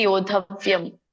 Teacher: ಯೋಧವ್ಯಂ ಅಲ್ಲಿ ನೀವು ದಕ್ಕೆ ಧ ಒತ್ತಿದೆಯಲ್ಲ, ಹಾಗಾಗಿ ಯೋಧವ್ಯಂ ಅದನ್ನ ಒತ್ತಿನೇ ದೀರ್ಘವಾಗಿ ಹೇಳ್ಬೇಕು